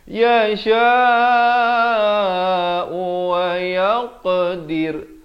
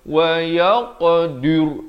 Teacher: Dir dan ra ni dibacakan dengan nipis. Jangan baca wa yaqdir, itu tebal, salah.